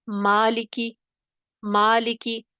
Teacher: نہ میم میں ادائیگی میں منہ بھر رہا ہے، نہ لام میں بھر رہا ہے، نہ کاف میں بھر رہا ہے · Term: مرقق